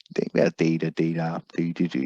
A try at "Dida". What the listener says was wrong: You adding an R onto the end there, mate.